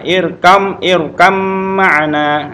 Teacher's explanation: Nah, irkab ma'ana dibaca langsung ba sukun ketemu dengan mim, langsung ke suara mim